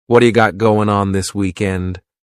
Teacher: surrounded by vowel sounds is going to change to a d it's called a flapped t and it just rolls off your tongue in a smooth way · the word what is going to change to a D sound this is really typical of American English where a t that's surrounded by vowel sounds is going to change to a d it's called a flapped t and it just rolls off your